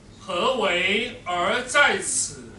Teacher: 句調先低後高，表示疑問啊